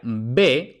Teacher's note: Es decir, el fonema B se puede pronunciar de dos formas distintas dependiendo del contexto. Entonces, se pronuncia B, oclusiva, total, ¿no? Con un cierre total de los labios, después de pausa